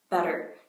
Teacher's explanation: So when you say the word better, your tongue is flicking your alveolar ridge as you say the word better